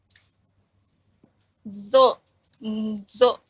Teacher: pangkal lidahnya naik sama tengah lidahnya naik